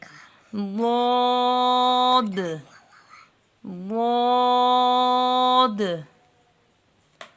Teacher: ضاد ضاد، غود زبان کی کروٹ جب اوپر کی ڈاڑوں سے لگے، یہ جو زبان کا موٹا حصہ ہے سائیڈ والا، یہ اوپر ڈاڑوں سے لگے تو غود ادا ہوتا ہے، اور اس میں نرمی ہے، غود نرم ہے۔